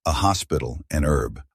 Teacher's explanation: The special rules about h come from misapplying those rules to different accents. So Americans who pronounce the h in hospital but not in herb